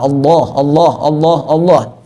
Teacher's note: Ketika lamnya fathah maka dibaca tafkhim tebal.